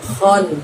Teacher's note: Kho kita mengeluarkannya dari ujung tenggorokan kita.